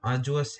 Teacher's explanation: has three syllables and the stress is on the first